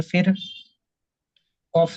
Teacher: কফ এসেছে তাই রকে বারিক হবে না পুর করে পড়তে হবে